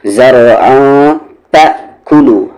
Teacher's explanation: تنوین کے بعد تا یہاں پر اخفا ، زرعا تأکلو، حمزہ ساکن ہے یہاں پر آپ جھٹکے کے